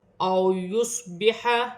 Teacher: او یصبح، واو ساکن سے پہلے زبر واولین بن رہی ہے، اسے کھینچا نہیں جائے گا۔ سواد ساکن ہے، سیٹی والا حرف ہے، موٹا حرف ہے، سیٹی کے ساتھ ادا کیا جائے گا، اپنے سے پہلے حرف کی حرکت کے ساتھ ملا کر پڑھا جائے گا۔